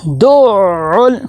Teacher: فذالک الذی، آگے یدع، یا کے اوپر زبر ہے، دال کو عین کے ساتھ ملائیں گے، یدع، دال کو عین کے ساتھ ملائیں گے تو عین کے اوپر سختی بھی ہو اور ٹھہراؤ بھی ہو، دعل۔ آگے عین کو لام کے ساتھ ملائیں گے، لام کے اوپر جزم آ گئی ہے تو یہاں پہ کلکلا نہیں ہونا چاہیے، یدعل یتیم۔